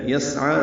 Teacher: سین ساکن پہ ہمس ہے ، عین کھڑا زبر ہونے کی وجہ سے 2 حرکات لمبا